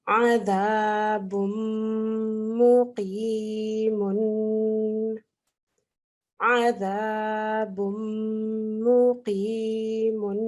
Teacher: So what happens is that this tanween of dhamma turns into a dhamma, and in turn we merge into the mim mushaddad to do the full nasal sound